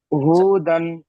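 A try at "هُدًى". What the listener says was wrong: আচ্ছা, হু বলে টান দিয়েছেন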